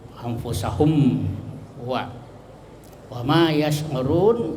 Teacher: Hum wa min sukun ketemu waw, ya, izhar syafawi, ya, izhar itu jelas, ya, jadi jelas mimnya. Syafawi itu bibir, ya, jadi bibir ketemu bibir. Anfusahum wa ma yash'urun, ya, itu tadi mad arid lisukun.